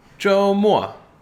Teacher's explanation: First tone, fourth tone.